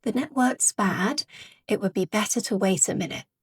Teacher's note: in network, we are going to have a glottal tea because it's tea at the end of a syllable before a consonant sound, w.